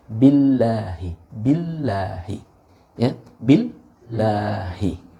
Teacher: Nah, otomatis lam atau lam yang terdapat pada lafzul jalalah maka kita baca tarkik, ya, tipis